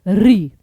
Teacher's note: अब री के लिए जीभ को थोड़ा सा मोड़ना पड़ता है, तो वो आपका मूर्धन्य ध्वनि में आता है।